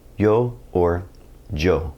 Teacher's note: through the majority of the Spanish speaking world is going to sound somewhere between an English Y and an English J